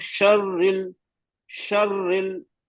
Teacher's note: रा पे तस्दीद है तो वक्त लेना है